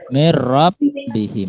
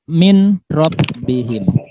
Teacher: Nun mati bertemu dengan ro, maka dibaca tanpa dengung.